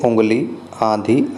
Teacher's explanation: ऐसे स्वर नाक से बोले जाने के कारण अनुनासिक कहलाते हैं, जैसे उंगली, आंधी आदि। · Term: अनुनासिक स्वर